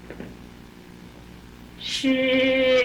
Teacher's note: 윗니 입뿌리에서 입천장 그 경구개음이라는 데서 나거든요